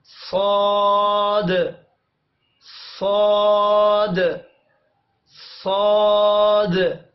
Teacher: صاد کے لیے زبان کی نوک کو ثنائے سفلی کے کناروں کے ساتھ لگانا ہے اور زبان کا پچھلا حصہ تالو کی طرف بلند کرنا ہے